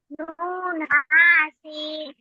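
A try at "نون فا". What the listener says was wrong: নুন হা না তো, নুন ফা। দেখে বলেন। নুন ফা।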